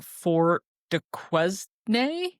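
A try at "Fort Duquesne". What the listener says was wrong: Q like in French. Okay, you don't pronounce it qua, you pronounce it ka. Just act like it's a K.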